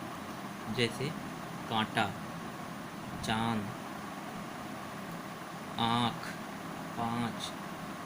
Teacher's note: जब भी बोलते हैं, तो आवाज़ मुख से और नाक से दोनों से एक साथ निकलती है। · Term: अनुनासिक